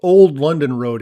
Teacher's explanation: It's called Old London Road here, with the emphasis on the word old.